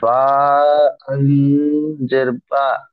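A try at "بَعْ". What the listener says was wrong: বা আইন জাবার জের নয়, বা আইন জাবার বা, বা আইন জাবার বা, মিম বা, দাল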